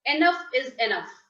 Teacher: you will end it on a lower note or downward inflection.